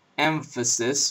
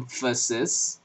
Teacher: emphasis with a labio dental nasal